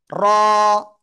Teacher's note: জিহ্বার আগার পিঠ তার বরাবর উপরের তালুর সাথে লাগিয়ে মোটা আওয়াজে আমরা এক আলিফ টেনে উচ্চারণ করব